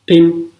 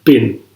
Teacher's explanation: P sound is voiceless, b is voiced.